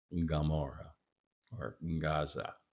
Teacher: a very back of the throat gutural G almost an ngg sound